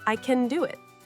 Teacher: The t sound is almost silent.